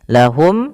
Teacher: Cara membacanya ketika mim bertemu dengan hamzah wajib jelas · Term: izhar syafawi